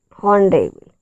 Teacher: H is silent in honorable. The word begins with the vowel sound of A-W.